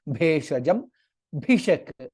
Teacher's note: again bha is mahaprana